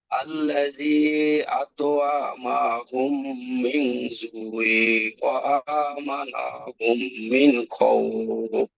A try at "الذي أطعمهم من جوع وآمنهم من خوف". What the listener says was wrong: এই ভুলটা অনেকে হয়েছে যে আল্লাযী আত'আমাহুম, আইন টান হবে না, আত'আমাহুম মিন জু'ইন। আমাহুম,